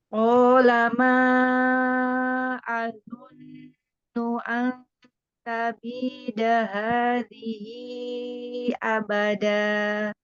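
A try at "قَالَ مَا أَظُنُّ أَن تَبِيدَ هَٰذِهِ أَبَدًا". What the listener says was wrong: Masih ya, masih kurang tebal harful do-nya. Nah, masih ada huruf do di sini.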